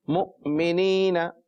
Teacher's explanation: میں مؤ پر پھر جھٹکا دے رہا ہوں کہ حمزہ ساکن ہو تو اس پر جھٹکا دیا جائے گا